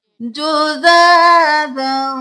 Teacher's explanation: جُزَاذًا کھڑی زبر ہے، الف کے برابر کھینچیں گے.